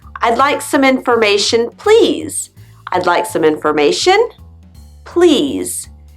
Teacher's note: your intonation goes up and then down to sound polite when you ask for something · your intonation goes up on the word before please